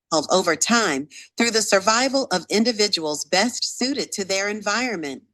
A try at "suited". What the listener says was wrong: It should be very clear. You can say suited or sweeted. But at least you have to pronounce the ed very clear.